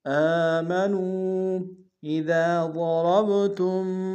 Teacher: نون واو مدہ ہے اور مد منفصل ہے، کم سے کم دو الف مقدار میں کھینچیں گے۔